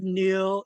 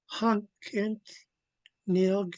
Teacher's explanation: I'm making sure to blow lots of air from the back of the throat